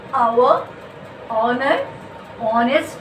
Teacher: You are not saying the ha, sound.